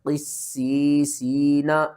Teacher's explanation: یہاں پر دیکھیں تو سین کے اوپر تشدید بھی ہے اور آگے یا ساکن سے پہلے زیر ہے، حروف مدہ ہے، پھر بھی حروف مدہ ہے، 2 حروف مدہ آ رہے ہیں اور 3 سین آ رہی ہیں۔ تو قاف کو آپ نے موٹا کر کے سین کے ساتھ ملانا ہے